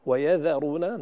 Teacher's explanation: نبهنا إلى الذال أنها مرققة دائما